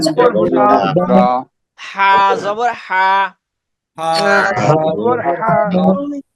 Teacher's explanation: গলার মাঝখান থেকে একদম কন্ঠের গলার মাঝখান থেকে